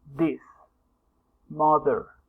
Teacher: mother is dental and fricative